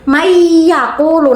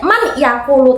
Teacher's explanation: Nah bacanya itu tidak man yakulu tapi mayyakulu. Dari non sama ya-nya itu digabung langsung dimasukkan. Dengung ya, jangan cuma man yakulu, ingat-ingat.